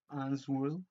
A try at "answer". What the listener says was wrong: Pero si está tachada la W, no tienes permiso de pronunciar la W. No, pero ¿por qué quieres pronunciar answer? Ya te dije que esta letra no está ahí. Answer, así dime. Answer. Answer. O sea, la W no suena. Answer.